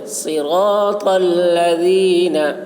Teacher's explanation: صراط میں صاد کو پر پڑھنا ہے، را کو اور طا کو، یہ تینوں حرف کو پر پڑھیں گے · لذین میں ذال کو بہت ہی باریکی کے ساتھ ادا کریں گے